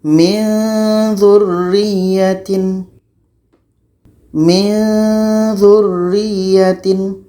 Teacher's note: Ketika kita sebut huruf nun, maka seolah-olah kita sudah merasakan huruf za. Min dzu, min dzu. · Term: dengung dan secara samar